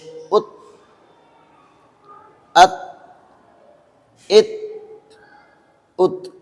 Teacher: اب دیکھیے اس کو بہت لوگ پڑھتے ہیں ات، تو یہ غلط ہے۔ اس کی آواز لوٹ کر نہیں آئے گی، اس لیے کہ یہ حروف قلقلہ میں سے نہیں ہے۔ اس کو اس طرح پڑھیں گے: حمزہ، تا، زبر، ات، حمزہ، تا، زیر، ات، حمزہ، تا، پیش، ات، ات، ات، ات۔